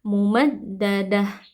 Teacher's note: Amadim tanwin bertemu dengan huruf mim, hukumnya adalah idgham li gunnah. Tanwin kita masukkan ke dalam mim disertai dengan dengung.